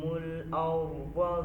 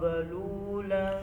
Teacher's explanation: ज़ाद मोटा है, ठीक है, ज़ाल बरीक है और ज़ाद के मोटा होने के साथ साथ उसमें सिफ़्त इस्तितालत है